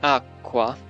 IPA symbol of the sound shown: kʷ